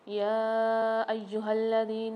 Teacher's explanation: یہاں پر یا کو کھینچ کے پڑھیں گے 3 سے 4 الف کی مقدار، اور یا دوسرے یا پر مشدد ہے، سختی اور جماؤں کے ساتھ پڑھیں گے الف کے ساتھ ملا کر۔